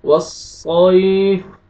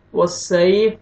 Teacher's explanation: صاد کو آپ نے موٹا کر کے پڑھنا ہے